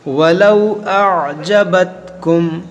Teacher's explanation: यहाँ पर देखें, आ हमज़ा आइन ज़बर आ, इसको लोग आइन को हज़फ कर देते हैं, तो आइन आपको पढ़ना है